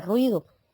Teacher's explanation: Vemos que la U y la I, al ser débiles, permanecen juntas en una sílaba. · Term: diptongo, dictongo